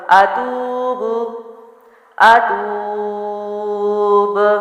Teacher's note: با کو یہاں میں نے قلقلہ کر دیا، اور واو مدہ یعنی حروف مدہ کے بعد والا حرف اگر ساکن ہو تو حروف مدہ کو وقف میں 3 الف کے برابر لمبا کرتے ہیں۔